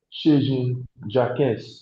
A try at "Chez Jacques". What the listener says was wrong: No. ES is not pronounced. It is monosyllabic word. Jacques. It's not a K. The Q you give you K, right?